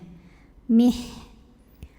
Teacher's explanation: Nah, ini ha dari segi angin jelas ya, anginnya keluar, hamas. Dari segi suara lemah sandaran terhadap makhrajnya. Artinya ini rokhawah ya, mengalir suaranya.